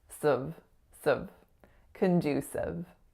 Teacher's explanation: It's condu. And then that third syllable is S, schwa, V.